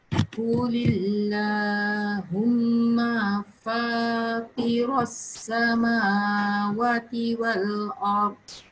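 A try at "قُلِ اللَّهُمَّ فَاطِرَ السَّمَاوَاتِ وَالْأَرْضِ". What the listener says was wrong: Your wa is pendek. Bila you sebut wa pendek, actually kena panjang 2 harakat. Daripada Fatira pula. Yang ni, this one. Sorry, I bulatkan. Panjang lagi. You sebut mim je panjang, wa tu you tak panjangkan.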